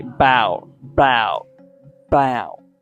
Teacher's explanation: the a is actually removed and we pronounce it like bow bow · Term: connected speech sound